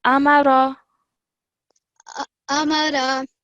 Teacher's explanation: ra only has a simple fathah. So don't stretch it for more than 1 second